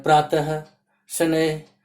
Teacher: बोलते समय हम प्रातः के अंत में ह और शनैः के भी अंत में ह का उच्चारण कर रहे हैं। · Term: विसर्ग